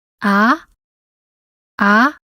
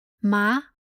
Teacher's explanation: The second tone rises from low pitch to high pitch, just like the English question, what? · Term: second rising tone